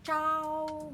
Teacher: ZH itu tidak keluar udara, tidak ada aspirasi.